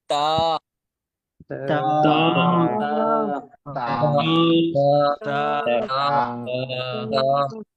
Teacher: ایک تو زبان کی نوک ہوگی اور دوسرا دو دانت جو سامنے والے ہیں ان کے اندر والے حصہ جو جڑوں کا حصہ ہے وہاں سے تا ادا ہوگی